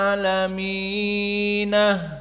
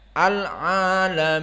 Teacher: difathahkan nunnya dan dijadikan ha sakt